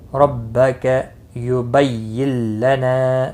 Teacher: رو زبر کی وجہ سے پر پڑھا جائے گا